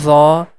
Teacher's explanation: we have to stretch for three count of llama letter zaw the tip of tongue is touching with the edges of frontal teeth and this is also a heavy letter